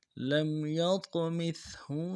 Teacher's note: لام کو میم ساکن کے ساتھ ملانا ہے، میم ساکن میں غنہ کریں گے